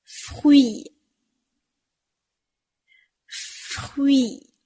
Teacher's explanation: ，这是那一首。当中呢，就有▁fruit▁这个单词。那▁fruit▁这个词啊，它在发音的时候呢，其实和前面我们讲到的▁voyage▁一样，也是要注意每一个音都要发到位，不要吞音了。而且呢，这个词有一个难的地方，就是在于辅音群▁f▁加上半元音▁y，▁再加上元音▁e，▁整个的组合。你发出来以后呢，你的嘴巴应该感觉像是做了一节动作很大的操一样， 从咬唇的▁f▁到嘟嘴的▁y，▁最后是拉长的▁e ，▁那中间呢还有一个小舌音▁y▁e▁free▁free。▁而且这个词啊，不仅要注意嘴唇的紧张，你的口腔也应该是紧张的，不然呢有的同学就会发成▁fui，▁那就是口腔拉得太大了，注意口腔也是紧张的，扁平的▁fui。▁那发好了这个词呢，以后我们就可以自己哼哼水果沙拉这首歌啦。▁Salade▁de▁fui▁joli▁joli▁joli。▁又讲到吃的了，大家是不